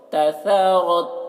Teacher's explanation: रॉ को पुर पढ़ना है, तसरत, और ता में कलकला ना होने पाए, यानी तसरत, इस तरह से आवाज़ टकराएगी नहीं ता में